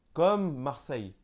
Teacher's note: Quand il y a deux L, on va prononcer comme un Y.